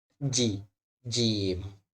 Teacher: Lidah bagian tengah bertemu dengan langit-langit.